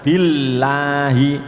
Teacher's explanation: Jadi billahi itu seperti lam. Lam makhrajnya ujung lidah menempel pada gusi. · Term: tarkik